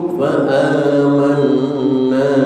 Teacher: ada mim mati ketemu fa izhar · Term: idhar syafawi